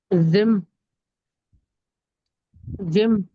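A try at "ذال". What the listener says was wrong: नहीं जिम नहीं है। हाँ ये जिम नहीं है।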